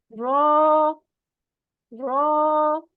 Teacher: और ये भी लाइट लेटर है। फिर है रॉ, जबान की नोक का ऊपरी हिस्सा सामने के ऊपर वाले दो दांतों के मसूड़ों से लगता है